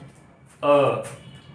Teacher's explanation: और उसके अलावा अब अर्धविपरीत जिसमें मुख आधा खुला हो, इसमें आ जाएगा अ